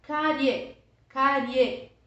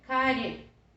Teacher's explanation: o E, que é o mais forte, é a vogal. O I está apoiado nele na mesma sílaba, semivogal. Ditongo crescente.